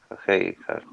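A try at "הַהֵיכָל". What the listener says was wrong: Jajejal. Recuerda que la yud no se pronuncia aquí. Jajejal.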